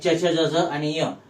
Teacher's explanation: या व्यंजनांचा उच्चार करताना आपल्या जिभेचा स्पर्श कठोर तालूला होतो आणि उच्चार होतो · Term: तालव्य